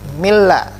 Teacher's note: Mirra langsung masuk ke ro tanpa dengung.